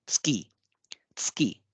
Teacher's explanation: ये ऊ डिवॉइस हो जाएगा, मौन हो जाएगा, लगभग मौन हो जाएगा, और इसलिए हम इसका उच्चारण करेंगे स्की। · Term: डिवॉइसिंग